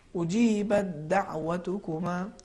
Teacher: یا اسی کا برعکس آپ دیکھ لیجئے, مثال کے طور پر اجیبت دعوتکما, یہاں پہ پہلے تا ہے پھر دال ہے, اس میں بھی وہی کیفیت ہے, یعنی ہم تا کا تلفظ نہیں کریں گے, حرف دال کو تشدید کے ساتھ پڑھیں گے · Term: ادغام